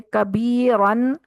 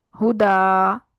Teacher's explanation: وقف کرتے ہوئے اسے ایک الف کے برابر لمبا کر کے پڑھتے ہیں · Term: الف مدہ